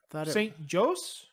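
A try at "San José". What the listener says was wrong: No, because the J is pronounced as an H. San Jose. San Jose, California.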